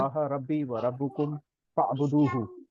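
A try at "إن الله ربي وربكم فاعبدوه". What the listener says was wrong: बेहतरीन, माशाल्लाह।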